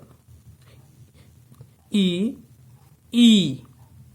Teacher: तालू से उच्चारित होने वाले स्वर